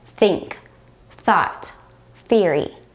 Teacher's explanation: the unvoiced sound does not require you to use your vocal cords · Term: unvoiced th